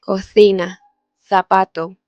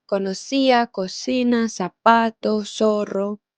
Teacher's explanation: Esto se llama distinción y en gran parte de España, especialmente en el centro y norte de España, la C antes de E y antes de la I y la Z suenan así, interdental